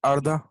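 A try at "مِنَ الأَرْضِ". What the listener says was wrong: अर्दा, हाँ अर्दा सही वर्ड है, अर्दा। मिनल और नहीं, मिनल और दी, इसमें दा की आवाज आ रही है, अलिफ की आवाज नहीं आ रही, मिनल अर्दी होता है, मिन अर्दी।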